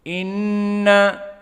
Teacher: Maka inna hamzah huna muraqqaqah dan nun juga muraqqaqah, walakin hunna nun musyaddadah, menunjukkan bahwa ada gunnah atau wujubul gunnah. Maka harus gunnah di sini dalam keadaan dua harakah.